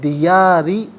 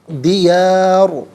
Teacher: ساکن ہوگا تو ناظرین اسے پر کر کے پڑھا جائے گا، دیاری باریک، دیار یہاں پر کر کے پڑھا جائے گا